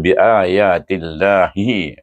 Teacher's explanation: Pertama kita idamkan ti kepada lam jalalah dengan bacaan nipis dua harakat dengan mad bacaannya